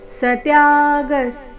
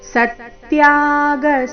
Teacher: ಮಾಡಬಾರದು ಚೈವ ಸತ್ಯಾಗಸ್ ತುಂಬಾ ಜನ ಸ ಮೇಲಿನ ಆಘಾತ ಮಿಸ್ ಮಾಡ್ತಾರೆ ಇಲ್ಲಿ ಸ ಮೇಲೆ ಆಘಾತ ಇದೆ